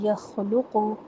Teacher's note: خا موٹا پڑھنا ہے، قاف بھی موٹا پڑھے، لام موٹا نہیں پڑھنا